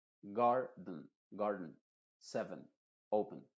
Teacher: uno pronuncia esa sílaba donde está la shua de forma muy rápida